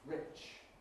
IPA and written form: rɪʧ (rich)